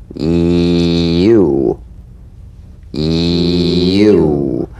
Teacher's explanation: The Y tongue front consonant. A touch of the Y buzz before another vowel.